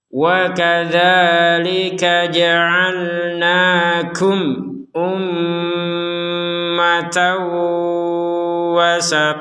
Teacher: mim sukun bertemu Hamzah maka kita membacanya dengan jelas